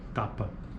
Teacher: Letra T, ou símbolo T, oclusiva alveolar desvozeada